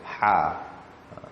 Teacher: Huruf ha pedas dekat tengah-tengah kerongkong kita. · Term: ha yang pedas